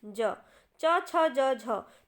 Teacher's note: च वर्ग हमारा किसके अंदर आता है तालू के अंदर आता है हमारा च वर्ग